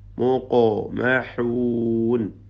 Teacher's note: ഖാഫിൻ്റെ സുക്കൂൻ ഖൽഖല നൽകി ശബ്ദം ചലിപ്പിക്കുക. ഖൽഖല സുഗ്ര, അതോടൊപ്പം തഫ്ഹീമും.